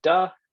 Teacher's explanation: it's argued that indian english exhibits a one-to-one substitution pattern where the dental stop is substituted for the interdental fricative found in american english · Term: stopping